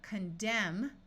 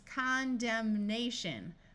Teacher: condemn with a silent n but when we add the letter a and the suffix shun it becomes condemnation where the n Sound is clearly heard